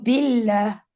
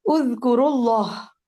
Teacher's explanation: لام لائٹ ہے کیونکہ پیچھے زیر ہے